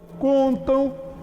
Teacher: Bom, o M está depois de A, somente depois dessas duas vogais, de A e de E. O M depois de A tem o som de U, portanto, isso aqui também é um encontro vocálico, um ditongo nasal decrescente.